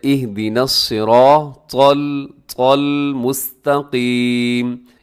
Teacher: اہدنا الصراط، را موٹا پڑا جائے گا، اور آگے جو مشکل ہے وہ ہے تو کو موٹا کیجیے گا، تو باریک نہیں ہے، ہمیشہ موٹا پڑا جاتا ہے